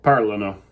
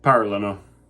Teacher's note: you're going to stress that first syllable under the A